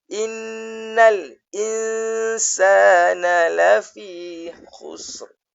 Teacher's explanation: Tapi nun ke atas lam tak boleh dengung. Kemudian nak kena dengung pula bila nun mati bertemu dengan sin.